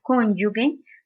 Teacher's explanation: en su segunda sílaba se presenta este fonema africado lingüopalatal sonoro